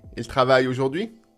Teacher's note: The question is simply shown by the intonation. The voice going up at the end.